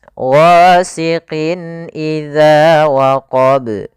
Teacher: suara tanwin ya, nunnya dibaca dengan jelas. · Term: izhar halqi